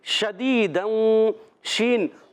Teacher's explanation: اور شین میں ایک صفت پائی جائے تفشی، یعنی منہ میں آواز کا پھیل جانا